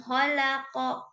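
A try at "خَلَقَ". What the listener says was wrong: Disukunkan coba. Kholaqa. Jadi jangan kholaqa. Nah, kalau seperti itu jadinya fathah ya, bukan sukun. Bunyinya apa? Ketika di qalqalah bunyinya ke hanya saja karena huruf qaf tebal ya, maka kedengarannya seperti gitu ya, tapi bukan ko. Ya beda, kita fathahkan dengan kita sukun ya. Kholaqa. Kholaqa ya, seperti itu.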